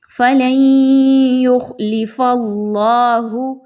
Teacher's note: اللہ سے پہلے والے حرف فا کے اوپر زبر تو اس لیے اللہ کے حرف کو موٹا کر کے پڑھیے گا